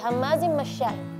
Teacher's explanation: Ya, makhrajnya itu dari depan, itu makhraj huruf sin. Sedangkan huruf shin dia dari tengah-tengah lidah. Jadi anginnya keluar dari semua lubang-lubang antara gigi itu semua keluar. Kalau itu cuma dari bagian depan saja.